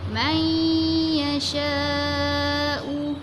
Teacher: Tengah-tengah lidah kita mesti kena lelangit. Lepas tu bibir kita tu kita lebarkan sikit macam kita sebut ya.